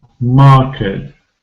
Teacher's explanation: I know that a r spelling usually makes the sound ah long vowel sound